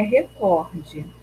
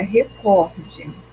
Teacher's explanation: Então a sílaba mais forte é o có.